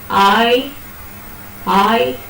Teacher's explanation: i is a long glide your tongue actually starts from a low position and goes up but what about a it's a very short glide from just